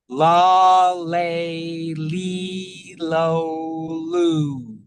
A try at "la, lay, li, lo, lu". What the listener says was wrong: So I do feel like the L's are right now, we're making a little too much of them. They sound a little like your tongue's a little thick or just moving a little slower.